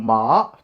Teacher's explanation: Using the commonly used 5-degree marking method, we have first tone ma 5-5, second tone ma 2-5, third tone ma 2-1-3, and the fourth tone ma 5-1.